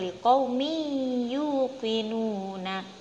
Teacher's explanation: Liqaumi itu ada harokat tanwin berupa kasrotain yang bertemu dengan huruf ya yang berbunyi yuqinuna, maka tanwin membacanya dimasukkan ke dalam huruf ya yang ada di depannya, yaitu membacanya liqaumi yuqinuna, seperti itu. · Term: idgham bihuna